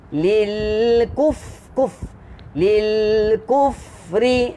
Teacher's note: Huruf fa dia ada angin saja yang keluar, jadi kita tak boleh rapatkan kedua bibir sepenuhnya. Kalau rapat kedua bibir sepenuhnya dia jadi bunyi lil kufri.